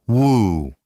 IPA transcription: w